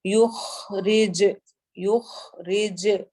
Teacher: خا موٹے حروف میں سے اور حروف حلقی میں سے. رج میں اگین کلکلا ہو رہا ہے جیم کی ساؤنڈ کے اندر گونج پیدا ہوگی.